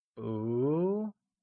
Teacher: It is said with a mid-rising tone, like boo.